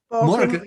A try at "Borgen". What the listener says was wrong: Like Morgan, but with a B.